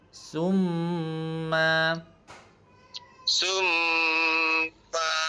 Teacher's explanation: Mim tu ada tanda syaddah. Jadi dia kena dengung dalam kadar dua harakat.